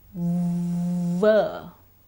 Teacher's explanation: say bah is it a voiceless or a voiced sound well there's plenty of vibration in the throat the sound is voiced